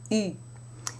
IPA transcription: y